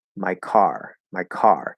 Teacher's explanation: the k is stronger but also we hear the stress in the second of the two · we have a k sound at the start of a stressed syllable so what happens to the k it has to be nice and strong it has to be aspirated